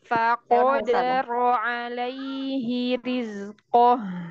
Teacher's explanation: huruf qaf itu kan huruf isti'la. Kalau huruf isti'la itu suaranya naik ke atas ke langit-langit. Jadi nggak boleh langsung ko, tapi ko.